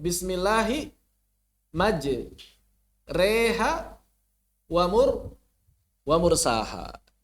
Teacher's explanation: Allati qoblal alifi nahwa al-kasrati fatakhrujul alifu, maka si alif keluar bainal alifi wal ya'i, maka suara alif keluar menjadi suara baru yang berada di antara alif dan juga ya. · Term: imalah kubra